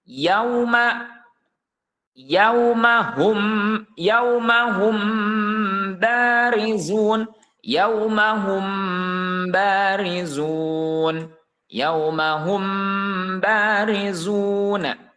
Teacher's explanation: huruf mim tersebut dibaca samar ya namanya ikhfa kan tuh disebutnya dibaca samar dan disertai dengan gunah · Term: ikhfa syafawi